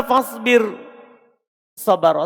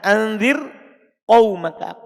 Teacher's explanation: Ada huruf ro fathah, huruf sod fathah setelahnya. Ro-nya sukun sebelum ro-nya kasro. Tapi tetap dibaca tipis.